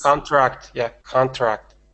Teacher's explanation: make sure that you're getting that R in there because the word contact and contract are different words